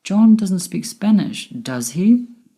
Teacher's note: my voice went up at the end with does he because i'm not sure whether he speaks spanish or not